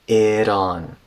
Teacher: before the ah in on, the T turned into a tap.